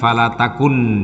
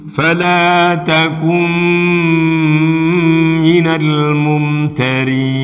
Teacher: langsung masuk mim dan mimnya ditahan mim ditasdid menjadi bacaan gunah jadi dobel makanya agak panjang · nun sukun bertemu dengan mim, bacaannya adalah idgham bi gunnah yang menghilangkan nun menjadi mim semuanya. Fala takum, bukan fala takun, tapi langsung masuk mim dan mimnya ditahan.